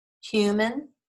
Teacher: that has the schwa sound in the second syllable because the first one is accented